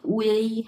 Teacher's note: Chinese ভাষাতে লেখা থাকবে হচ্ছে এরকম ইউআই থাকবে, বাট উচ্চারণ হবে হচ্ছে উয়েই